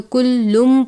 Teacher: کلم، باریک والا کاف ہے، تنوین ہے، اس کے بعد میم مشدد ہے، تنوین کو میم مشدد سے ملا کر غنہ کر کے پڑھیں گے۔ لفظ کلن ہے لیکن اس کے بعد میم مشدد ہے، تنوین کو میم مشدد سے ملا کر جب پڑھیں گے تو کلم پڑھیں گے، کلم غنہ کر کے۔